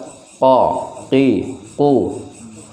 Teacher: Ora dibenturkan dengan yang atas, harus dibenturkan. Maka lidah ini membentur ke langit-langit atas, tapi ke bagian yang berupa daging lunak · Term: qaf